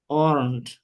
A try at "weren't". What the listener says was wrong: আপনার ওয়াটা আসতেছে না প্রপারলি